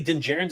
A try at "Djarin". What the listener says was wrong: I think that D is silent. Djarin. Djarin.